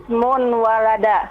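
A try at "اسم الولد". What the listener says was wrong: Ismul walada. Bukan ismun, tapi ismul. Di mana salahnya? Jadi bagaimana seharusnya? Tetap alif lam tetap. Ismul. Ismul walada.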